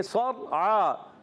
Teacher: صاد کو موٹا رکھنا ہے، را کو بھی موٹا رکھنا ہے کیونکہ اس را ساکن سے پہلے زبر، عین پر کھڑا زبر، ایک الف کھینچ کر ادا کریں گے۔